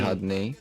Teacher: Where should I place the stress? On the final syllable